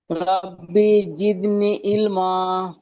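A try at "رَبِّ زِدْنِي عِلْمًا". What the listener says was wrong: জি মাশাআল্লাহ মাশাআল্লাহ।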